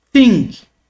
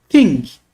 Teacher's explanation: teta é a língua entre os dentes tá bom soprando porque ela ela é uma dental